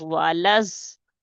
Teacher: لام کو ضاد کے ساتھ ملائیں گے، ضاد کے اوپر شد ہے، اسے جمع کے پڑھیں گے